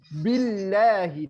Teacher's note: Tipis Allahnya kalau kasroh sebelumnya. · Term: Allahnya tipis